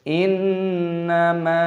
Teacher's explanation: Aturannya adalah membacanya dengan cara ghunnah , sambil bersenandung. · panjangkan mim dengan tanda alif, mad thabi'i. Perpanjang dua ketukan.